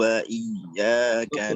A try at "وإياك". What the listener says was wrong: وإياك رقق الألف.